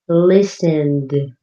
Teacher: listened ends with a d sound, less strong than looked